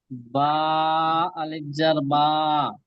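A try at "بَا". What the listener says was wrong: জবারটা স্পষ্ট বলেন বা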